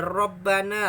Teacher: rohnya tafkhim tebal roh dibaca tebal